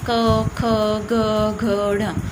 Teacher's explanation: क ख ग घ ढ, ये जो है इसका उच्चारण कहाँ से होता है? कंठ से। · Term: क वाली लाइन